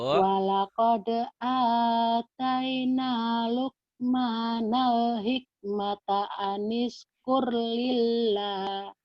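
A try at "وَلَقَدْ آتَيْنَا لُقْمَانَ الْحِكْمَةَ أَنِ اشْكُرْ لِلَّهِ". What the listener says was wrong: kekurangan ibu di sini kalau kolahnya nggak keluar. Di sininya jangan ditahan. Sama shinnya biasa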